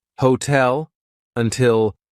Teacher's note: Hotel, until all of those words start the stressed syllable with T, we're going to use the true T sound.